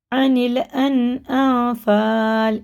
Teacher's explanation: یہ اخفا ہے، نون ساکن کے بعد فا آ رہا ہے